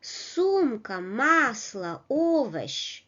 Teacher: сумка, масло, овощ. The first syllable is stressed.